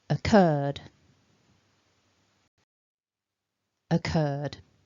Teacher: the stress is on the second syllable and we begin with a nice weak schwa so our stressed syllable is curd we've got our a long